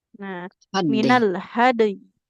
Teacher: Huruf dal harus dipantulkan dulu.